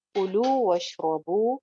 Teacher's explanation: कुलू कु सिंगल हरकत, लू एक अलिफ लंबा